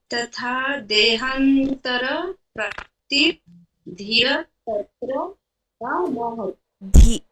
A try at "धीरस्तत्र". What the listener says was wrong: धीरस, धीरस नहीं है, धीरस नहीं है, लंबा कीजिए। धी कीजिए, लंबा कीजिए।